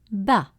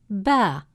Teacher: The letter Ba with Fatha makes the sound Ba, short and quick, with a slightly open mouth. Then when we add Alif to stretch the sound, it becomes Ba, a longer version of the same sound. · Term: long A sound